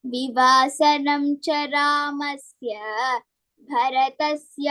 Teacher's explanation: So in this, Bharata, that bha is Mahapranaha